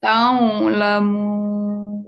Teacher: Buka mulutnya. Membaca ain itu di tengah tenggorokan.